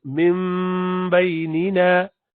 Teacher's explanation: نون ساكنة followed by با becomes ميم.